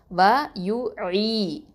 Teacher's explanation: நடுத்தொண்டையிலேருந்து இந்த ஐன் வந்து வெளிவரணும். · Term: வசத்தல் ஹல்க்கு